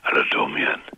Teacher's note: du sprichst aber mit heiserer Stimme